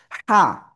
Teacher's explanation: গলাটা চেপে হালকা বাতাস বের করে উচ্চারণ করতে হবে।